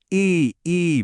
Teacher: जरा ट्राई कीजिए। ई बोलिए, जीभ आगे है, होंठ फैले हुए हैं।